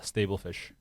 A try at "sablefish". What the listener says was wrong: Sablefish. Sable, not stable. Sable.